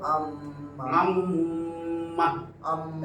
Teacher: নাকের বাঁশিতে এক আলিফ বরাবর ধরে রাখা উচ্চারণ এখন কিন্তু মুখ দিয়ে উচ্চারণ হইতেছে না, নাকের নাকের বাঁশি থেকে গুনগুন আওয়াজে উচ্চারিত হয় আম্মা। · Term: গুন্না